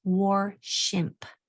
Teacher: Be careful that you don't put an R right there after the SH.